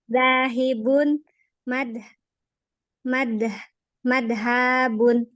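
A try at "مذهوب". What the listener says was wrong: Zal. Madhubun. Madhabun. Bukan dal ya, tapi zal. Bukan dal. Zal.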